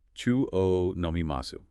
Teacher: It's written wo, but said. Always pronounced o, just like the vowel o, not whoa. Forget the W sound entirely in pronunciation. Just O. And its function.